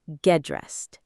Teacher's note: The T at the end of get softens when it's followed by another consonant sound.